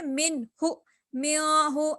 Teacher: من ہو میو ہو ایسے غنہ کر لیے، اخفا نہیں کریں گے ہم، اس یہاں کیا کریں گے ہم من ہو میم نون سے من بول رہے ہیں ہم، اس کو یہ ظاہر ہو گیا. میو بولے تو یہ کیا ہے غنہ ہو گیا، ناک میں آواز ہماری چلے گئی